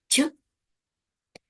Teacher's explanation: Ть у нас приголосний, глухий та м'який.